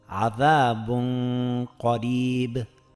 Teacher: Demak, bu misolimizda ham sukunli nunni o'zidan keyingi harfning mahrajiga biroz yashirib, idg'om qilib talaffuz etyapmiz va uni 2 harakatgacha cho'zayapmiz. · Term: ixfo